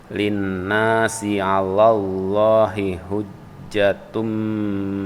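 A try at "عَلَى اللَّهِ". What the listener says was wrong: Ala Allah, jangan sampai la-nya jadi double. Ala Allahi.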